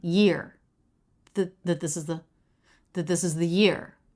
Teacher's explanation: no pitch change that this is the because they're all unstressed I have more volume I have more pitch change on year